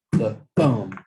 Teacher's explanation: an unstressed syllable you're not putting the stress on it followed by a stressed syllable